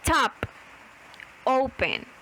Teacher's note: open tiene la mayor fuerza de voz en la O, que está al inicio de la palabra, no al final